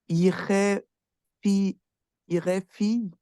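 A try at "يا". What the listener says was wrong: juste sur la première lettre, tu prononces pas la fatha. C'est ya.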